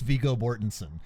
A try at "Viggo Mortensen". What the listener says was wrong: Oh, okay. Then you said Bortensen.